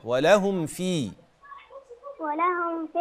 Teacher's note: الميم مفيش فيها غنة